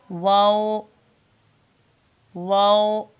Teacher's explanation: दोनों होंटों को गोल करके वह को अदा करते हैं वो वो जितने होंठ गोल होंगे ना तमाम बंद होंगे तो